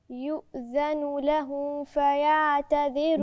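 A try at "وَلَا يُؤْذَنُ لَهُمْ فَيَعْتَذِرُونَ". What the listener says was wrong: الميم مش باينه لهم ف خلي بالك الميم والفاء ما فاء الثنين فيهم قرب لازم اظهر الميم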